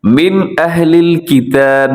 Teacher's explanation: من میں آپ نے غنہ نہیں کرنا، یہاں پر اظہار ہو رہا ہے، یعنی آپ نے تیزی سے پڑھ جانا ہے۔